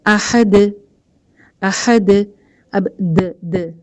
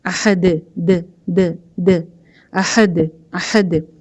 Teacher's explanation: ایک سیکنڈ میں زبان وہاں لگتی ہے دال کے مخرج پہ, یعنی کہ اوپر کے دو دانتوں پہ, ایک سیکنڈ کے اندر ہی ہٹ جاتی ہے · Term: قلقلہ